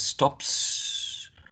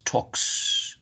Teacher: the voiceless consonant sounds such as p in stops, k in talk, get voiceless s